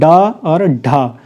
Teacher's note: मूर्धन्य व्यंजन जो मूर्धा से जब आप बात करते हैं तो वो मूर्धा से निकलते हैं, ड और ढ। ठीक है, जब आप ड और ढ बोलते हैं आपकी जीभ मुड़ करके कहाँ पर लगती है? मूर्धा में टच होती है